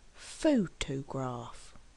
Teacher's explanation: photograph has three syllables and we actually stress on the first syllable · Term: word stress